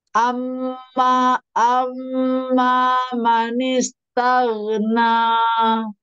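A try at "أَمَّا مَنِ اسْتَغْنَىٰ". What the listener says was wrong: Pada manis, di situ rohowahnya kurang ditahan. Amma manis tau. Manis tau. Pokoknya tebalkan lagi. Pada posisi ta, ketika ta, ini mulut kan dibuka. Nah, ini si pangkal lidah langsung naik, tapi ini jangan digerakkan rahangnya, tetap pada posisi ta. Tao, tao.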